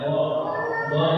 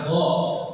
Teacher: Dha itu sisi lidah. Nempel ke geraham.